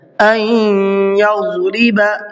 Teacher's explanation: ضاد کو منہ بھر کے پڑھنا ہے